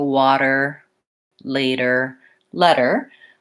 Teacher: it's what's called a flap and it's that my voice is on like it is for a D but I'm not building up pressure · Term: flap T